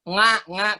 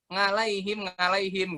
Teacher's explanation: paling banyak orang baca huruf Ain kan nga kalau orang Jawa biasanya.